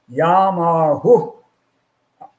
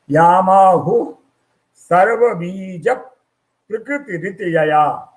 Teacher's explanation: आहु पर विसर्ग है तो हम विसर्ग को अवश्य ही बोलेंगे, ऊ नहीं है, ऊ के साथ विसर्ग है।